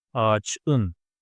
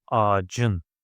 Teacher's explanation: The last consonant is ç, it's an explosive one. It needs to alternate itself to the relative, the softer one, c. So ağacın. And the next one is kağıt, paper.